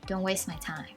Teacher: The word waste, if you pronounce it by itself, then it's going to be waste. But with Americans, you can just drop the T sound in the middle.